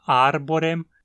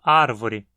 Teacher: arborem se tornando árvore, onde o B espirantiza num V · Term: espirantização